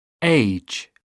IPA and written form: eɪʤ (age)